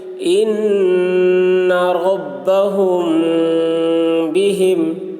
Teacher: میم ساکن کے بعد با آ رہا ہے، اس لیے غنہ کے ساتھ اخفا کریں گے۔ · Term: اخفاء شفوی